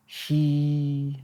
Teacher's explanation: Now, while you're doing it, when you're doing the sound aw, your tongue is sort of touching up, kind of high in the throat, breathing. And when you're doing the he, kind of a high, kind of a nasally sound.